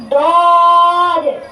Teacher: زبان کی کروٹ اور اوپر کے داڑوں کی جڑ سے ادا ہوتا ہے